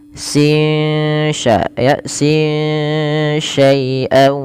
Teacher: suara nunnya disamarkan kepada huruf setelahnya sehingga ya dia membaca antara izhar dengan idgham, yaitu tidak dimasukkan dan tidak diperjelas, tapi di antara kedua-duanya. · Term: ikhfa hakiki